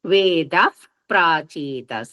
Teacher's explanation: ద తర్వాత విసర్గలు ఉన్నాయి తర్వాత ప ఉంది కాబట్టి ఆ విసర్గలు వెళ్ళిపోయి పొల్లు పఫ్ అనే శబ్దం వస్తుంది ఉంది వేదః ప్రాచీతస ప కింద రకారం ఉంది సంయుక్తాక్షరం కూడా వేదః ప్రాచీతసా